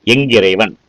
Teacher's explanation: ஒற்றெழுத்து தனக்குரிய மாத்திரையிலிருந்து அது நீண்டு ஒலிக்குது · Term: ஒற்றளபடை